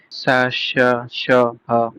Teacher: उष्म व्यंजन वर्णों के उच्चारण में हवा मुख से रगड़ खाती हुई धीरे-धीरे बाहर निकलती है। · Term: ऊष्म व्यंजन